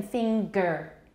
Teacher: ng was not originally a phoneme in english those were two separate sounds